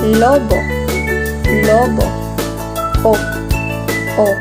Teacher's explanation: Ito ay gitnang palikod, nasa likod ang dila at bahagyang pabilog ang labi